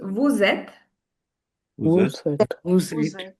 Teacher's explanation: We are again linking the sounds. The next word starts with a vowel. So we're going to pronounce the S. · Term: Liaison